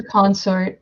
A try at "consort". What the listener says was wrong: Do you mean consort? Yeah, it's something else. Emphasis on the other syllable.